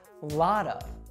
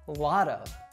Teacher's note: In situations like these, Americans tend to pronounce it with a soft D sound